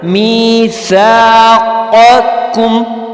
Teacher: پہلا قاف جو ہے وہ موٹا قاف ہے جو ہم ادا کریں گے حلق سے، اور دوسرا قاف ہے چھوٹا قاف، ٹھیک ہے. بہت سارے لوگ یہاں پر غلطی کر دیتے ہیں، تو اس کو بہت دھیان سے آپ نے سننا ہے اور پڑھنا ہے.